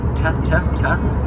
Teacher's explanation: the ta is a soft ta at the front of the mouth